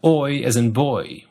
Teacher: American English has oi as in boy, which has a higher starting tongue position. RP starts further down at the same spot as o, as in court.